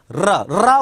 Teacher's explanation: र र बोलने में जो जीवा है इसको दो तीन बार कंपन करना पड़ रहा है जीवा पहले कंपित हो रही है कंपन कर रही है इसलिए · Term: प्रकंपित